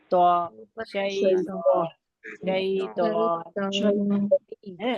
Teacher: अब त की अदायगी हमें मोटा करना है और मोटा करके पढ़ना है और जबान को रखना है अपने सामने के दो दांतों के किनारे पे ऊपर के